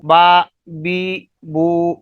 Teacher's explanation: تو یہ دونوں ہونٹوں کے جو اندرونی تر حصہ ہے ان کے ملنے سے حرف با ادا ہو رہا ہے